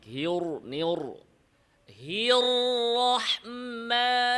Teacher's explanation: রতে আওয়াজ সামান্য জারি, আওয়াজ বন্ধ করা যাবে না।